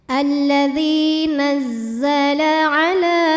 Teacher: lam tabi'i muqaddar karena ada baris fathah panjang di atas huruf lam. Cara bacanya dipanjangkan lamnya 2 harokat.